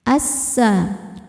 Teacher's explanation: Sebab alif lam menghadapi huruf syamsiyah yaitu sin. Maka alif lam tidak dibaca masuk langsung ke sin. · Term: alif lam syamsiyah